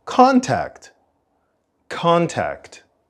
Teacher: the stress of the word contact is at the beginning contact contact and we also don't complete the full T sound